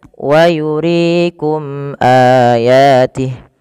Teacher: Izhar syafawi yaitu suara mimnya dijelaskan. Izhar artinya jelas. Syafawi berkenaan dengan bibir kita. Maka ketika ada huruf mim bertemu dengan seluruh huruf hijaiyah, maka ya kita namakan dengan mad eh maaf izhar syafawi kecuali dua huruf yaitu apabila mim bertemu dengan mim, mim bertemu dengan ba.